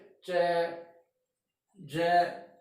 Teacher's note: यहाँ ऑब्स्टेकल होता है between the tip and blade of the tongue. तो टिप और जीभ के बारी शिरा, जो पतला ब्लेड धारदार शिरा है, उसके रिम और ये साइड के टीथ को टच करते हैं। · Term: पैलेटो एल्वियोलर